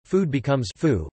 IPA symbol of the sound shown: fuː